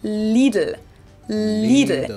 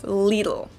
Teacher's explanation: both of the L sounds are light L's that you pronounce with the top of your tongue